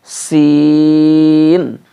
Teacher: یہ زیادہ کھینچنا ہے، مد ہے اس کے اوپر